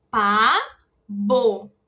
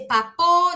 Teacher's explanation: Que depois vem a vogal O de ônibus. Ela vai estar entre a vogal A e a vogal O, então ela vai ter som de B de bola